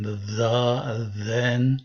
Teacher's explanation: i should mark the th as the breathy th as in the then